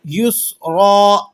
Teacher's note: سین کو آپ نے باریک سیٹی کے ساتھ ادا کرنا ہے، اور را دو زبر رن کی جو تنوین ہے وقف کی حالت میں 2 زبر کی تنوین کو الف سے بدل دیا جاتا ہے۔